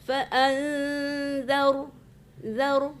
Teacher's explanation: zaru mematikan ra itu tafkhim ya, tebal ya, tadi enggak ada tafkhimnya, fa'anzar gitu sebenarnya.